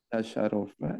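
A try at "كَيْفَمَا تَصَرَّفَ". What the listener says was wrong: Ini yang harokatinnya salah. Harusnya kaifama tasarrufa.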